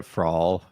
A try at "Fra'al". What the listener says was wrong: You got to roll your R's. Fra'al.